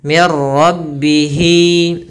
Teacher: Maka hi-nya kita panjangkan sepanjang 2 harakat. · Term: mad silah qasirah